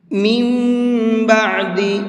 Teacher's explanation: اب یہ نون نہیں پڑھا جائے گا، یہ میم پڑھا جائے گا۔ اگر اس لفظ کی ہجے کریں تو اس طرح سے ہوگی، میم میم زیر میم، ساتھ میں غنہ بھی کریں گے۔